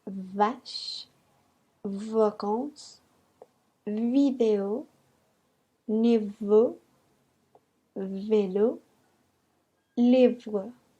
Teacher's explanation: los dientes chocan el labio inferior para que se pueda sentir una vibración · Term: consonante V